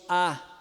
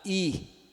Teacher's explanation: o a a língua tá lá embaixo e no centro e o i a língua tá lá em cima e lá na frente